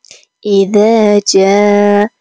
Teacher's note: ذال است که از نوک زبان ادا میشه